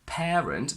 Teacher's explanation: We say parent because in this case the R appears before a vowel sound, so we do need to pronounce it.